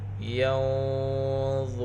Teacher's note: اخفا میں سے ضا، یہاں پر اخفا کی آواز موٹی ہوگی، را کو پر پڑھیں گے، را کے اوپر پیش ہے ، سات واو ساکن واو مدہ، ینظرون